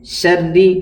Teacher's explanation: را کے اوپر تشدید ہے، اس کو سختی کے ساتھ پڑھیں گے اور 2 بار پڑھیں گے